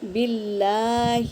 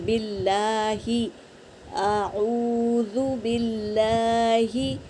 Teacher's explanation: اللہ کے نام سے پہلے زیر ہے تو یہ اللہ کا نام باریک پڑھا جائیں گا، تو باللہ اس طرح۔